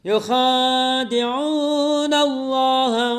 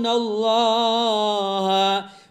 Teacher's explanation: Mad tabi'i di'u mad tabi'i nallah itu tafhim ya. Lafaz Allah sebelumnya ada nun berbaris fathah, maka wajib tebal dibacanya, yaitu tafhim.